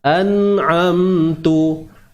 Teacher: Izhar syafawi jelas pada huruf mim yang datang daripada syafah bibir kita.